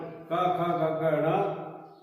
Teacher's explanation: क ख ग घ ङ, ह और विसर्ग, ये सारे कंठ से बोले जाते हैं। इसको कहते हैं कंठीय, कंठ है।